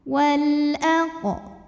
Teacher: karena alif lam menghadapi huruf qamariyah yaitu hamzah, maka lam sukun dibaca jelas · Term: alif lam qamariyah